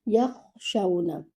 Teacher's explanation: You have to run your kha, and there is a slight bubbling sound in your kha because the letter kha is with air